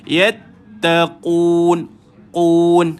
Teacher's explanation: Bila baca qaf ni tuan-tuan, dia mesti ada delay dia sikit.